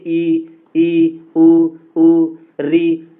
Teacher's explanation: वे स्वर जिनके उच्चारण में मुख वृत्त के समान बंद सा रहता है अर्थात मुख सबसे कम खुलता है तो संवृत स्वर कहलाते हैं।